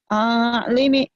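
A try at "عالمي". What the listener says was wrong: Jangan putus. Jangan putus. Jangan lama.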